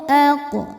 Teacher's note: Cara bacanya memantul dengan pantulan yang kecil. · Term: qalqalah sugro